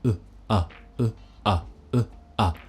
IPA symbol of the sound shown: ʌ